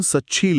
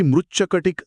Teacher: हो, इथे एकाच वेळी 2 बदल घडतात. तचा च होतो आणि पुढील श बद्दल छ होतो. ही गुंतागुंत सोपी करून सांगायची तर त आणि श हे दोन्ही ध्वनी एकमेकांच्या प्रभावाने पूर्णपणे नवीन रूप घेतात.